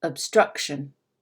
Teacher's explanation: compared to the other vowels in the word the uh of struck is much more clearly spoken than any other vowel especially compare it to that first o obstruction it's almost like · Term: clarity